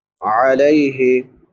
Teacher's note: अलैहि लाम के बाद या लीन है या साकिन मा क़बल फ़तहा यानी ज़बर है, इसको नरमी से पढ़ेंगे। आखिर पे बड़ी हा है, हलक के आखिरी हिस्से से अदा होती है जो सीने के साथ मिला हुआ है, जिसको अक्सा हलक कहते हैं।